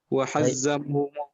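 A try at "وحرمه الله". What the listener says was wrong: La, hadza khata. Was sahih wa harramahu Allahu. Ya, itu apa salah? Itu salah. Yang betul itu ra, bukan zai, bukan za. Wa harramahu Allahu.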